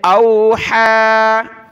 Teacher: حا کھڑا زبر حا، حا نکالیں گلے سے